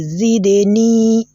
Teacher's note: The noon too has been elongated, and in this case, the type of elongation that we have here is known as al-maddul asli. Al-maddul asli, that is the basic elongation, right?